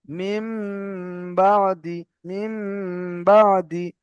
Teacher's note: নুন সাকিনের পরে বা এসেছে, তাই নুন সাকিনকে মিমের দ্বারা পরিবর্তন করে এক আলিফ পরিমাণ গুণনা করে পড়তে হবে।